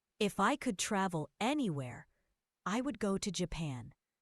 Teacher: Notice the pause after anywhere. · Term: thought grouping